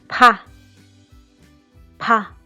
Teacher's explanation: P is an aspirated sound. Pa, pa. You can feel a breath of air coming out.